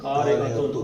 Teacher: تن آیا اور آگے حمزہ آ گیا تو یہاں پہ نون تنوین کا اظہار ہے